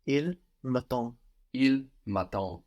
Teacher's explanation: Here we don't hear the last D.